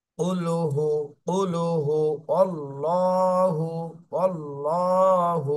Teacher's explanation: আল্লাহ শব্দ মোটা করে মোটা করে পড়তে হবে